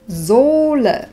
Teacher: H nevyslovíme, pretože stojí za samohláskou O, to O však vyslovíme dlho.